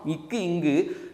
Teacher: நாவின் முதற் பகுதி, அன்னத்தின் அடிப்பகுதி.